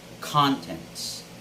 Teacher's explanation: contents mean something that is actually contained by something right and the stress should be on the first syllable always